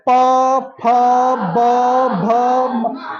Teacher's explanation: अब हमको बोलना है प फ ब भ म। हमारा होठ मिल रहा है ना, अब अपने होठों को पकड़ लीजिए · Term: ओष्ठ